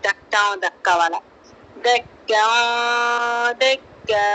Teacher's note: یہاں پر تنوین کی آواز کو ایک الف کی مقدار ناک میں چھپاتے ہوئے ہلکا غنہ کرتے ہوئے پڑھیں گے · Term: اخفا